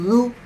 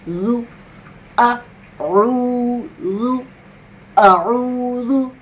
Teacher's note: اس کے بعد ذو، جیسے آپ تھا نکالتے ہیں دو دانتوں کے بیچ میں سے زبان کو ذرا سے نکال کر پھر ہوا نکالتے ہیں